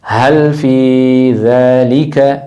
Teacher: ہل یہ سینے سے آواز آ رہی ہے. ہل فی تھوڑا سا لمبا کرنا ہے، مد ہے، تھوڑا سا لمبا کرنا ہے 2 سیکنڈ. ہل فی ذالک، جو آپ کی زبان کی نوک ہے وہ اوپر والے دانتوں کے اس جگہ پہ لگے گی.